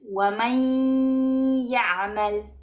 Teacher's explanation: vamos a pronunciar la ya como si tuviera un shedda sin pronunciar esta nun y en la ya vamos a dar gunna o aguante de sonido nasal. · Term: idgham con gunna